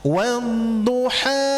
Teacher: di sini adalah mad thobi'i. Dua harakat